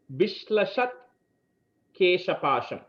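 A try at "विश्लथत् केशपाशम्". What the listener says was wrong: அங்க ஷா இல்ல விஷ்லதத் கேஷபாஷம்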